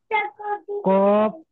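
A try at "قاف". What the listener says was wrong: এটা কফ বলছেন, এটা কফ নয়, এটা কাফ কাফ।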